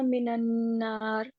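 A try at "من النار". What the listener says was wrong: ये मिनन नार है। हाँ, ये इसीलिए मैंने दोबारा पढ़ा है, नून पे जबर नहीं है, मिन नार तजदीद है, तो जोड़ेंगे दोनों लफ्जों को।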